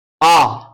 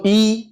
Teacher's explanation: आ तो मुंह पूरा खुला, बोलो ई तो मुंह बंद है